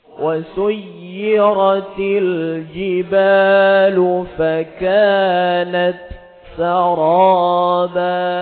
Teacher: jadi harus jelas bunyi hames di dalam huruf ta yang sukun